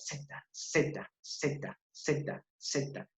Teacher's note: Tu lengua se coloca aquí en los bordes tanto de los incisivos superiores como de los incisivos inferiores y que al mismo tiempo es sorda, no vibra. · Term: dental